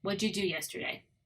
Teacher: So what did you is all changed into what'd ya.